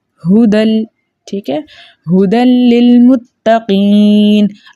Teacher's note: دال کو ہم لام کے ساتھ ملا رہے ہیں لیکن غننے کے بغیر